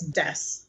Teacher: desk may come out as des